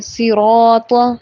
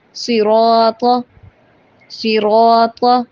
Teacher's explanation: را کے اوپر زبر ہو جب تو پڑھیں گے صراط، را کو پر پڑھیں گے